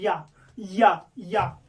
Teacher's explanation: या तालु का प्रयोग हो रहा